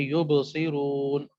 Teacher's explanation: اب یبصرون میں با میں کیا آ رہا ہے، ساکن ہو رہا ہے نا، جزم پڑی ہوئی ہے، اس جزم کی وجہ سے وہاں پر ہم نے قلقلہ کیا، اگرچہ کنٹینیو پڑھتے جا رہے ہیں یو بہت صحیح ہو، تو با میں کیونکہ سکون آ گیا تو اس لیے قلقلہ بھی ہو گیا